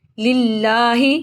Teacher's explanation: الحمد للہ، اللہ کے لام کو باریک پڑھیں گے زیر کی وجہ سے، اس کے نیچے زیر ہے تو اللہ کے لام کو باریک پڑھیں گے۔ اس کے اوپر اللہ کے لام کے اوپر کھڑی زبر ہے، اس کو لمبا کریں گے۔ للہ تشدید ہے، سکتی دیں گے۔